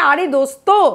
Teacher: দন্ত স আর ত এই যে যুক্ত ধ্বনি এইটা রয়েছে কোথায় এটা রয়েছে শব্দের শেষ সীমায়